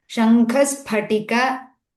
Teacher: there are two Mahapranas almost next to each other, we have to pronounce both